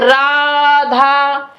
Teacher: जो आ की ध्वनि है, इसको बहुत खींच करके जो है बोलते हैं। यह धा की ध्वनि के साथ जो आ की ध्वनि है उसको बहुत देर तक खींच कर बोलते हैं। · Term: प्लुत